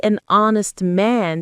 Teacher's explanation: So, we say an honest man, too, because the H is silent.